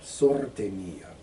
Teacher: Roll your R a little bit more on la sorte mia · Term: rolling your R's